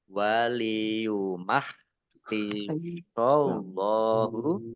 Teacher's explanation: Allahnya dibaca tebal karena harokat di depannya fathah. Lam fathah berdiri matobi'i, panjang 2 harokat.